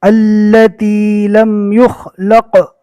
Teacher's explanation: قف میں کلکلا ہوگا، پہلے والے حرف سے ملا کر اس کے مخرج ٹکر کھا کر الگ ہو جائیں گے